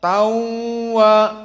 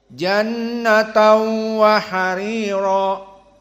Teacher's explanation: idghamnya tanwin masuk kepada waw, dan bi gunnahnya berpindah dari makhraj asy-syafah kepada makhraj khaysum dengan dua harokat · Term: idgham bi gunnah